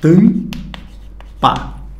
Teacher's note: O M está no final da sílaba. Esse M não tem um som próprio. Ele está simplesmente tornando essa vogal anterior com som nasal.